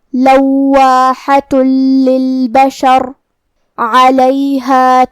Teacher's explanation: کلمت للبشر میں لام حروف الادغام بغیر غنہ میں سے ہے، تو ہمیں یہ تنوین کو لام میں ملا کے بغیر غنہ سے لیکن تشدید کے ساتھ یہ حکم کو ادا کرنا ہے